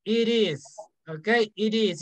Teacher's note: When we have a consonant, like T, it's a consonant, and then we have a vowel, we link the sounds.